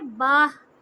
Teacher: जब ये इस तरह का आखिरी वर्ड हो तो हम उसमें से सिर्फ हा को लेते हैं और फिर हा के ऊपर भी जज़म लगा देते हैं। ना ता पढ़ेंगे ना तनवीन पढ़ेंगे, बा को हा से मिलाएंगे बाह, और ये आवाज़ सीने से आएगी, हलक से नहीं आएगी।